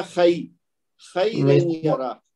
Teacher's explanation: یا لین سیکھنے کا مقصد یہ ہے کہ اس کو خیرن نہیں پڑھنا